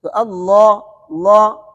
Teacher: کڑا زبر آخر تک موٹا، کڑا زبر الف مد ہے